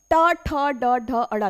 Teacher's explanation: जीभ तालु में स्पर्श तो हो रही है लेकिन उल्टी होकर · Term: मूर्धन्य